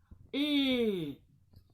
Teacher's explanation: Repite conmigo, Luego, la L. Y su sonido es L. Con la lengua enroscada